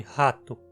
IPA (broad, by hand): hatʊ